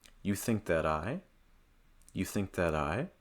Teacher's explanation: Notice there's a very slight pause for me after I say that.